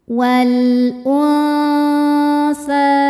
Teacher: Karena nun sukun ketemu sama huruf tsa. Cara bacanya nun disamarkan ke tsa disertai dengung. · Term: ikhfa hakiki